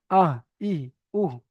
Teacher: এই কণ্ঠনালীর শুরু হতে উচ্চারিত হয় হামজা, হা।